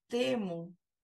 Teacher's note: quando eu falo temo Eu percebo que a minha língua tá muito mais próxima do céu da boca do palato do que dos dentes né a língua tá suspensa então temo Eu tenho um som